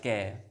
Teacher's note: पीछे ए की ध्वनि आ रही है, मतलब स्वर मिल गया उसमें